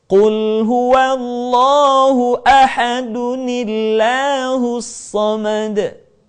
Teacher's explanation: Ahadun bertemu dengan lafaz Allah yang diawali dengan hamzah wasal. Ketika ahadun digabungkan dengan lafaz Allah, maka kita harus mengucapkan ahadun menjadi ahaduni. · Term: nun wiqayah